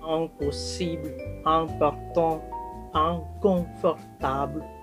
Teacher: Di akhir suku kata ini akan dibunyikan sengau.